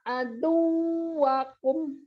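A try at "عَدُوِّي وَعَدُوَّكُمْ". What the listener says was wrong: Masih masuk hidung nih, wawunya. Pas baca aduwakum, pokoknya setiap itu, ini semua nggak ada huruf gunnah kan? Oh, kecuali kum di akhir. Coba bacanya pakai hidungnya dipencet coba. Aduwi, yuk. Aduwi wa aduwakum. Jadi waw tasydid, waw itu begitu aja. Ya, nggak boleh tahan-tahan.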